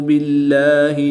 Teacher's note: یہاں پر اسم جلالت اللہ عز و جل کے لام سے پہلے حرف کے نیچے زیر ہے، اس لیے اس لام کو ہم باریک پڑھیں گے، پر نہیں پڑھیں گے